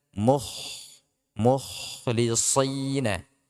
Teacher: kho diusahakan jangan sampai terlalu banyak serak ya, karena ini bisa menghilangkan sifat hamsnya